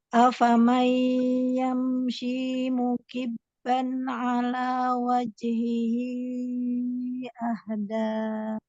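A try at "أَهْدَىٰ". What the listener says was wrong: Coba baca lagi ahda tapi nggak boleh kayak gini. Bukan ahda, nggak ada he-nya. Ahda. Jadi kalau mulai sekarang, oh nggak boleh ada he-nya. Berarti ahda.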